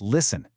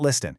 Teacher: When you use the word listen, you've got to remember to keep that T completely silent. It's listen, not listen.